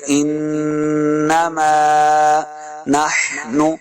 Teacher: نون مشدد پہ ہم نے ہمیشہ غنہ کرنا ہوتا ہے